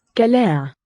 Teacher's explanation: listen to how the ein interacts there with the vowel. Becomes like a schwa.